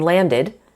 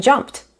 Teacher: It's id in landed, d in played, and t in jumped.